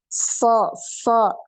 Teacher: sad ini ngalir nafasnya ya bisa dibuktikan dengan meletakkan tangan depan mulut ini ada aliran nafas yang ngalir ya